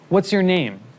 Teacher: we should make sure that our students repeat this question with their voice going down at the end, as this is the intonation pattern of WH questions in English.